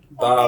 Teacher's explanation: Ba makhraj is lips pressed together and released.